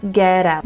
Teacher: the T is a flap T and it's going to blend right into the out